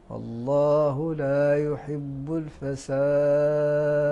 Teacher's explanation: هنا نجد الوقف على حرف الدال يكون في حكم ماذا القلقله